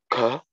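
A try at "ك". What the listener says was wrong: Bei dir kommt das wie ein K raus. Also, wir haben ja im Deutschen auch, im deutschen Alphabet haben wir G und wir haben K. Richtig? Dieses Kaf ist mehr zum G, na, nicht zum K. Deswegen müssen wir aufpassen, dass wir das nicht wie ein K aussprechen, sondern wie ein G mehr. K.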